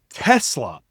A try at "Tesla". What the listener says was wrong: Yeah, you're putting the emphasis on the wrong syllable. Just let it go and keep trailing.